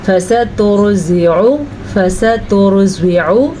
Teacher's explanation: را کو پر پڑھنا ہے کیونکہ را ساکن سے پیچھے پیش ہے